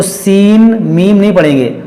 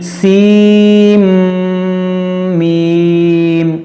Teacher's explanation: اس کو پڑھیں گے سیم سیم، اس کو نون کو میم میں داخل کر دیں گے، غنہ کریں گے. سیم میم، اس کو سین میم نہیں پڑھیں گے، تو سین میم نہیں، سیم میم، کیونکہ یہاں پر ادغام کا قاعدہ ہے